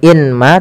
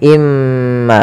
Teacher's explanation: Maka cara bacanya masukkan ke huruf mim yaitu imma. Bukan lagi inma tapi imma sambil ditahan gunahnya dua harakat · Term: idgham ghunah